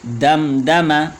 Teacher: دال کے بعد جو میم ہے پہلے والا یہ مشدد نہیں ہے، صرف ساکن ہے۔ دم دم، وقف کی حالت میں دم دم پڑھیں گے۔